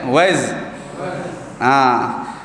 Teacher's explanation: Huruf za yang mana desiran itu berlaku pada antara gigi kita itu hampir rapat. Yang depan, gigi depan 4 batang, atas 4 batang bawah.